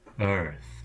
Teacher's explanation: position toward the center of the mouth and you get a kind of combination of the R and the vowel as one sound